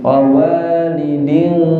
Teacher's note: Karena ada gunnah, ada dengungnya, dan dengung itu gunnah itu tempatnya di mana? Hidung. Maka harus ada dengungnya. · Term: idgham bi gunnah